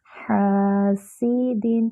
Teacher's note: سین کے نیچے کسرہ ہے، اس کو باریک کریں گے اور اس میں سیٹی کی بھی آواز آئے گی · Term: سیٹی کی آواز